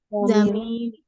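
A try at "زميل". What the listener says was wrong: Zamil. Bukan jamil ya. Jamil itu artinya bagus. Jamilun. Ya, zamil. Ya, ini orang Sunda nih. Hati-hati dalam berucap.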